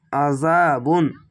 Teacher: আযাবুন আইন যাবার আ আইনটিকে মোটা করে গলা চিপে পড়বেন